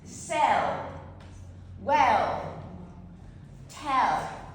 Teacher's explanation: The dark L is an L that doesn't touch your palette and it's present at the end of words. sell. Well, tell or followed by a consonant sold.